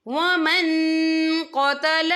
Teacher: تو ہم یہاں اکفا کریں گے، نون ساکن کی آواز کو ناک میں چھپائیں گے